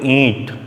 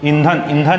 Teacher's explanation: अगर ईंट बोलोगे तो उसमें नाक वाइब्रेट होता है, अच्छे से बोलोगे ईंट। ईंट बोलने से नाक से वाइब्रेट हो रहा है, मतलब नाक की यूज़ हो रहा है, नाक का प्रयोग हो रहा है, और नाक से भी हवा धीरे से निकल रही है। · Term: अनुनासिक